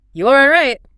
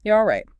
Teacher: Make your voice jump up at the end. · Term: high, rising tone